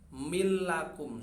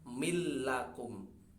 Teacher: suara nun tidak dibaca ya, terlebur ke huruf setelahnya berupa lam, mil lakum, tetapi tidak gunnah, tidak dengung, maka langsung mil lakum, tidak ada gunnahnya ya. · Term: idgham